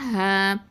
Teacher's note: இந்த ஹ அப்படின்னு சொல்லும் போது 2 அலிஃப் நீட்டணும், அலிஃப் மத்து, காற்று நல்லா வெளியில் விடணும்